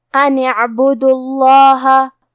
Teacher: یہاں ہمیں حرف اللام کو موٹی آواز میں پڑھنا ہے کیونکہ اس کے پہلے والے حرف ساکن ہے لیکن حرف الدال پہ پیش ہے.